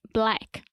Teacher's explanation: the a sound is very open and to the front